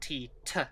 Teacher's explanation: the thai aspirated unvocalized alveolar plosive